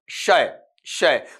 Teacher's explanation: जो जीभ का मैन बॉडी वाला हिस्सा होता है वो ऊपर के तालु को हल्का सा टच कर रहा होता है। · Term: पैलेटल